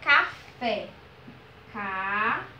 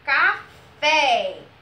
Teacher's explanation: O fé foi pronunciado com mais força. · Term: oxítona